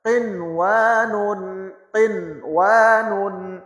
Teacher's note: اب نون کے واو کے ساتھ ہم نے میچ نہیں کرنا، الگ الگ پڑھنا ہے